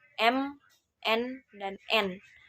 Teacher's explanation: Kemudian ada sangawan atau nasal, yakni terjadi penghambatan sepenuhnya aliran udara melalui mulut, tetapi membiarkannya keluar melalui rongga hidung dengan bebas. Pada sangawan itu terdapat bunyi M, N, dan N.